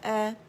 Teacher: حمزہ فتح ا کی ساؤنڈ ہونی چاہیے, آ کی ساؤنڈ نہیں ہونی چاہیے